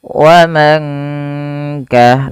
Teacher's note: Kemudian teman-teman qala wa man kafara, qala mad tabi'i lagi fathah bertemu alif, wa man kafara nun sukun bertemu kaf dibaca dengan ikhfa hakiki, yaitu dibaca samar suara nunnya ketika bertemu dengan kaf. Wa man kah langsung menyamarkannya atau dengungkannya ke huruf kafnya.